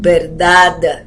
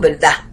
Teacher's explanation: los puertorriqueños acostumbramos a aspirar la D final, no decimos verdad, como dicen los mexicanos, decimos verdad.